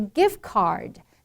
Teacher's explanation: the ending has a d but you don't explode it